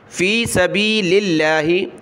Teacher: لفظ اللہ سے پہلے لام پر زیر ہے تو لفظ اللہ کو باریک پڑھنا ہے